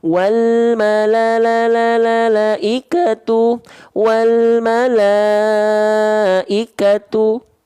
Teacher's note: kalau lima harakat berarti seperti kadar melafalkan la sebanyak lima kali pelafalan